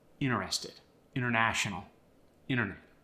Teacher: Then there's the vanishing T after the N.